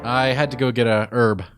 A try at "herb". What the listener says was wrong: So you really emphasize the H.